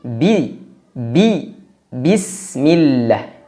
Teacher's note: tidak boleh ada udara tidak boleh ada angin yang menyertai huruf ba